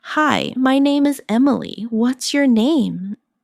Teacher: Notice how what's your can sound like whatcha in casual speech?